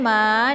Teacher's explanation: ma dibaca panjang karena di sini ada alif sebelumnya harokat fathah ya. Cara bacanya cukup dipanjangkan 2 harokat saja.